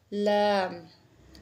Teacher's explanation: जुबान का किनारा आपका कहां लगेगा ऊपर वाले दांतों के मसूड़ों के साथ आपका जो हफा है उसको आपने दांतों के मसूड़ों के साथ